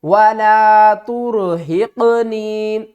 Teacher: قاف کو ہم نے تھوڑا سا ہلا کر پڑھنا ہے، یعنی کہ اس کے اوپر قلقلہ کرنا ہے